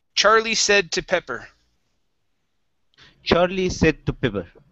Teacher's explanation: instead of said, with a long A, it's a short E.